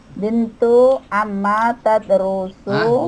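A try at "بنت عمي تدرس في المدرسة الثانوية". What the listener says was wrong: Bukan Ama, Ami.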